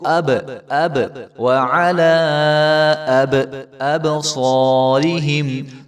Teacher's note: وعلی سمعہم وعلی ابصارہم وعلی ابصارہم، تو با کے اوپر جو ہے وہ قلقلہ ہو رہا ہے تو اس کو اب، اب، وعلی اب، ابصارہم، تو صاد کو موٹا کر کے پڑھیں گے اور صاد کے آگے جو ہے الف ہے اس کو ایک الف کے برابر لمبا کیا جائے گا۔ ابصارہم نہیں پڑھیں گے اس کو، را کے نیچے کسرہ ہے تو اس کو بھی لمبا نہیں کرنا ہم نے۔